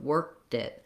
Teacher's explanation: You can hear I'm pulling my tongue up to stop for the K, and then I'm moving right into the flap for the dit, worked it. · So I'm not really releasing that K. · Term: stopped K